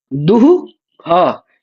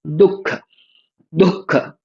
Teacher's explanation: लेकिन दुह ख ऐसा नहीं पढ़ते हैं, क्या पढ़ते हैं, दुख दुख ऐसा पढ़ते हैं। तो विसर्ग का उच्चारण होता है लेकिन आधा ही होता है, क्योंकि वो जो खकार है वो जिह्वा मूलीय बन गया।